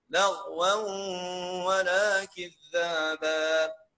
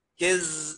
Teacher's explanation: خلي بالك ننطقها بحرف الذال، نطلع لساني بين اسناني